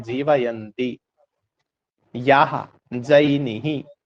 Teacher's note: जय का उच्चारण स्थान भी तालु है और य का उच्चारण स्थान भी तालु है